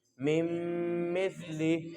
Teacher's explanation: سا کی آواز پڑھتے ہوئے سٹی کی آواز نہیں آنی چاہیے